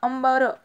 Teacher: अंबरमध्ये म चा उच्चार होतो